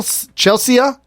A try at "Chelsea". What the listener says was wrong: you're probably trying to over pronounce the letters cuz Chelsea is spelled with EA at the end